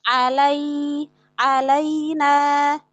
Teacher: Nah, di situ ketika lin itu jangan sampai ada hentakan. Sempurnakan fathah pada lam lalu masuk ke lin tanpa memanjangkan fathah dan tanpa hentakan.